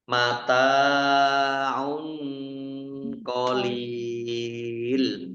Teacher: tanwin bertemu dengan huruf Q bacaan Ikhfa dibaca samar-samar